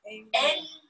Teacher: How do you make this emphasis? Is by slightly pausing after the first syllable and then delaying that release of the next syllable